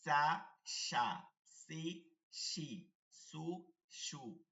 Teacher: শিন জবর সা, জিহ্বার মধ্যখান থেকে সা,